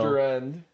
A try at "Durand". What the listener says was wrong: your accent makes it seem like you're saying Kevin Durant. Durant.